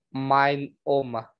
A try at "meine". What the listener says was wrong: Meine, como é? Falou, esqueci, você esqueceu de falar o E, só isso.